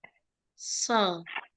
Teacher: Murni ujung lidahnya di gigi seri bawah, terus kemudian pangkal lidah dinaikkan ke atas, bibirnya dikuncupin.